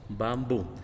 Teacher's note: Y básicamente pues lleva ese acento en la última sílaba.